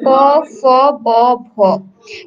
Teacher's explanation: এই চারটা বর্ণ তোমার একটা নির্দিষ্ট জায়গায় স্পৃষ্ট করছে, যেটা হচ্ছে দুই ঠোঁট। দুই ঠোঁট থেকে এই চারটা বর্ণ উচ্চারিত হচ্ছে। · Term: স্পৃষ্ট ধ্বনি